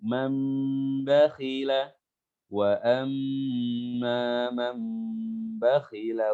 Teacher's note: nun mati bertemu dengan ba, iklab, ya. Dimasukkan ke huruf mim